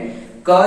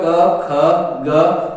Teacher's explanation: क जब बोलते हैं तो जीभ उसको रोकने का प्रयास करती है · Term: क वर्ग